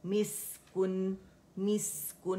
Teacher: मीम कसरा मी है, मैं की आवाज़ नहीं आनी चाहिए, मिस्कुन की आवाज़ आनी चाहिए